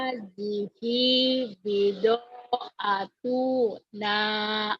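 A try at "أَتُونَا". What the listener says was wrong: Tuh-nya pendek. Dengerin Bu. Hadihi atuna. Gitu Bu.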